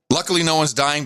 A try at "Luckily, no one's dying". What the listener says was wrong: No, you got to do it right. You did it right, but you didn't emphasize that. Luckily.